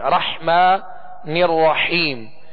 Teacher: بس، اب اس میں سکون ہے تو اس میں کامل سکون ادا کریں گے، اور اسی طرح آگے را جو مشدد ہے اس کو بھی دوہرا پڑھیں گے، اور حا کو واضح پڑھیں گے، 2 حا ہیں، رحمن الرحیم، حا کو وسط حلق سے پڑھیں